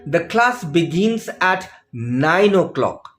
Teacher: so the stress is on nine o'clock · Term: new information stress